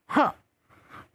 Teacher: विसर्ग की ध्वनि ह के रूप में आएगी